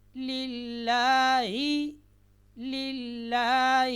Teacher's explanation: لفظ اللہ سے پہلے زیر آئے تو لفظ الجلالہ کا جو لام ہے یہ باریک آواز میں پڑھا جاتا ہے